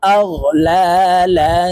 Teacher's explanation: দুই জবর লাং, ইকফাহ গুন্না তানউইনের পরে ইকফার হরফা আসছে, তাই এই লামকে নাকের ভিতরে লুকাইয়া গুন্নার সহিত পড়ব । আগ লা লা, ফা জবর ফা, হাজির হি, ইয়া জবর